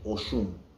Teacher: at the end, even the mouth closes, so it sounds like there's an M at the end.